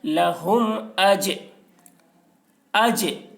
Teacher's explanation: جیم حروف قلقلہ میں سے ہے اور اس پر جزم ہے، اس لیے جیم میں قلقلہ ہوگا۔